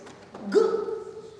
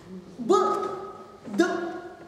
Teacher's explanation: Это различие между согласными взрывными и согласными сонорными. Взрывные согласные, они вот как шарик лопнут. Так вот раз, и все закончилось.